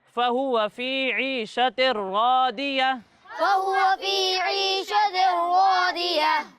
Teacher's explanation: ضاد کو موٹا کر کے پڑھیں گے کیونکہ ضاد حروف مستعلیہ میں سے ہے